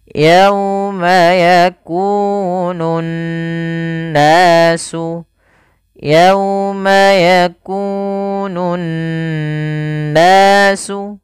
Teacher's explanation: Cara membacanya adalah menahan suara n ya sepanjang dua harokat. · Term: gunnah